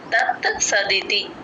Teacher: తత్స అనకూడదు తత్ త కూడా వినిపించాలి